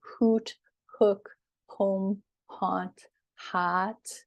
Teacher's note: these sounds are sort of at the back of your tongue